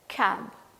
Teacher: The back of your tongue will be tending towards the soft palate, and that is how we pronounce the sound called K. As in the word called cab, C-A-B, cab, the initial sound K.